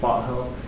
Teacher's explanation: when you hear British people speak, they swallow their T's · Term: glottal T